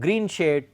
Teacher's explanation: 2 words with equal stress, they are part of this spondaic meter